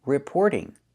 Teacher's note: we hear the t change to a fast d because it's between vowels. We don't hear reporting.